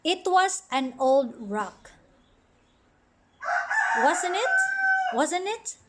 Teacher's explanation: so the intonation rises at the last part of the sentence